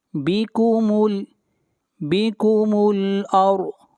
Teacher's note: را کو موٹا پڑھیں گے اور ضاد کو موٹا پڑھیں گے، ضاد حروف مستعلیہ میں سے ہے۔